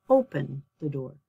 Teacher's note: If your stress is on your first syllable, like open, I don't say open, I'm not going to open the door, I'm going to open the door. So my stress is on the first syllable